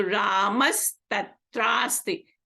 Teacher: Ta, tha, two hard consonant. So here the visarga is replaced by a sa, the sakara.